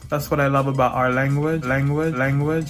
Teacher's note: in miami english you'll hear that dark l in places where you wouldn't hear it in other varieties